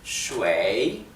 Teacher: Bien, como verán, si prestan atención a cómo lo pronuncio, lleva el tercer tono, o sea el tono descendente y ascendente